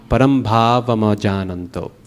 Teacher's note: Technically, the pause should not be there after bhavam.